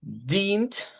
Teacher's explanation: En este caso, Abanich, luego dice alas, pues van a ver que se repita nuevamente alas, y luego diríamos dient, aquí una I larga en este diptongo, y luego la NT como tal, dient.